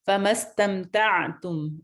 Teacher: عین ساکن ہے، اس پہ قلقلہ نہیں ہونا چاہیے ، تعتم ایسے نہیں ہونا چاہیے، ٹھیک ہے، فمستمتعتم به منہن،